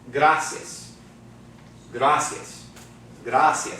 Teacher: And the I and the A are combined into one sound. · the accent's going to fall on the second to last syllable because it ends in an S. Okay? But that second to last syllable is not the I. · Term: diphthong